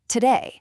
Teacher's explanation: This is a lazy uh sound making up 30% of spoken English in unstressed syllables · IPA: /ə/